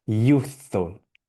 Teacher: I would say the F was pretty much silent that time